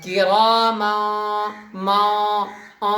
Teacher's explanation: ناک میں آواز کو لے جانا ہے اور تب جا کر کے پڑھنا ہے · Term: اخفا